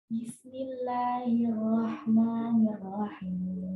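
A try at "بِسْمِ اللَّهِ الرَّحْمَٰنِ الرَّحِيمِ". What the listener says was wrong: Huruf ro nggak ada katanya di bibir. Makhraj huruf ro di mana?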